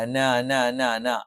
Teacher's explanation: നൂൻ എന്ന് പറയുമ്പോൾ നാവിന്റെ അറ്റം രണ്ട് വരി മുൻപല്ലുകളുടെ മോണയുടെ പിൻഭാഗത്താണ് നമ്മൾ വെക്കുക.